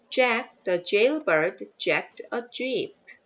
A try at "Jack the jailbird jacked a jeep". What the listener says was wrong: One more time for the jail. A. The A sound. It sounded like an A a while ago.